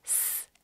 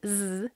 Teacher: They are an unvoiced voiced pair.